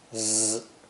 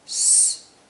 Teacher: Z has voicing, Z, but S has no voicing, S. In this sentence, feels has Z at the end, and so begins with S.